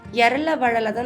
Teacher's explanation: தாபர ஆகிய ஆறும் வன்மையாக ஒலிக்கக்கூடியது ஞனன நமன ஆகிய ஆறும் மென்மையாக ஒலிக்கக்கூடியது இரல வழல ஆகிய ஆறும் வன்மையாகவும் இல்லாமல் மென்மையாகவும் இல்லாமல் இரண்டுக்கும் இடைப்பட்டு ஒலிக்கக்கூடியது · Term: இடையினம்